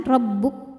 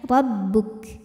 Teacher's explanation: Nah, kemudian kaf apabila berhenti, hati-hati ketinggalan hamznya atau sifat anginnya ya. Jadi kaf dari segi suara sifatnya syiddah, kuat, tertahan,